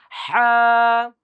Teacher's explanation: গলার কণ্ঠনালীর মধ্যভাগ থেকে উচ্চারণ করুন